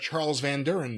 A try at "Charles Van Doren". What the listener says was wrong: Charles Van Doren, not Van Duren.